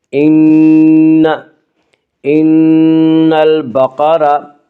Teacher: ان نون مشدد غنہ ہوگا، غنہ کی مقدار ایک الف ہے۔